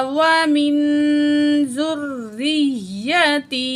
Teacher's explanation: نون ساکت کے بعد زال حروف اخفا میں سے ہے، نون کی آواز کو ناک میں چھپا کے پڑھیں گے